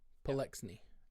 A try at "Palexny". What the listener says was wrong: It's more. It's not an S sound. It's a Z sound. Like I'm sleeping.